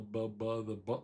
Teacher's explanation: what we call bilabial, both lips